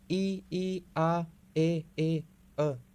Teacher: अव्रत मुखी में होठों की जो आकृति है वो गोल नहीं होती